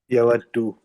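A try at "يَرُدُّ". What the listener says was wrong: no, yaruddu, because there is no wow, brother. Yaruddu.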